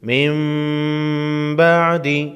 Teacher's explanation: حاجک فیہ من بعد، نون ساکن ہے، یعنی جس حرف پر جزم ہو ساکن کہلاتا ہے، اور نون پر جزم ہے تو نون ساکن ہے۔ نون ساکن کے بعد اگر با ہو، نون ساکن کے نون کو میم میں بدل کر غنہ کے ساتھ پڑھیں گے۔